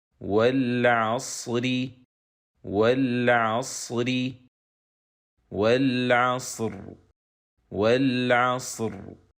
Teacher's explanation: But if we stop at the end of this word, we will stop on ra with sukoon. So now, ra is sakina, and the preceding letter is sakin, and the preceding letter has fatha. So, ra will be pronounced heavy.